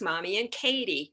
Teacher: the N is in the front and then it has to move to the back to produce the K sound.